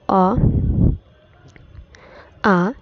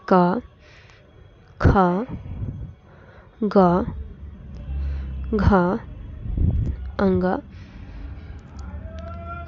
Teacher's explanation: हिंदी की कंठ ध्वनि अर्थात कंठ से उच्चारित होने वाली ध्वनियां है